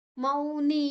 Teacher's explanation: ಮೌನಿ ಮೌ ದೀರ್ಘಾಕ್ಷರ, ನೀ ದೀರ್ಘಾಕ್ಷರ.